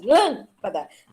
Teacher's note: É a antepenúltima sílaba, a forte. Lâmpada. Tem acento. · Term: proparoxítona